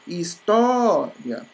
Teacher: Ó, o tó é a mais forte, logo ela é a penúltima, porque essa é a última e essa é a penúltima. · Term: Paroxítona